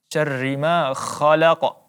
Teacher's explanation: Kemudian huruf ma, huruf mad tabi'i, maka kita panjangkan 2 harakat.